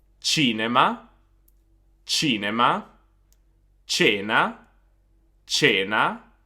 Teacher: The soft sound of the C is basically a ch sound, like the word chair in English.